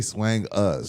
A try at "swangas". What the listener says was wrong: why the emphasis on us